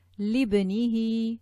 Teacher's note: from the lam to the ba, not reading the Hamzah al-Wasl